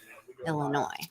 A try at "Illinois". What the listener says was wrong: No, it's not Illinois. It's Illinois. Silent S.